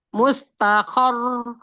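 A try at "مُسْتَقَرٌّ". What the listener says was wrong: Mus, ini yang mengalir. Sin sukun dialirkan dulu sempurna. Mustaqor.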